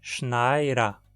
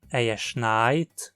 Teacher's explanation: o D acabou ficando entre duas vogais e, como consequência, é pronunciado como um R. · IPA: / ʃnaɪ̯ɾɐ /